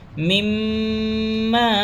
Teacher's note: میم پر تشدید ہے، ناک میں تھوڑی دیر آواز کو روکیں گے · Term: گنہ